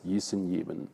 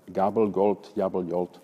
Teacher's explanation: certain varieties of German fricativized voiced velar plosive g into iota. This process is said to have originated before palatal vowels, as in gießen, geben, which come out as gießen, geben.